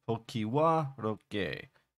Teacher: So third syllable stress, and then the fifth syllable has secondary stress.